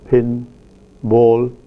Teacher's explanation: bilabial place of articulation produced by the lips